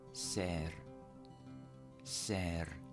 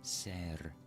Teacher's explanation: notice I did a little trill on the R